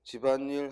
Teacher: 이응이 니은으로 바뀐 게 아니라 즉 비어있는 자리에 니은이 첨가된 것이니까